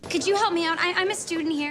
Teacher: could you, should you, would you become could ya, should ya, would ya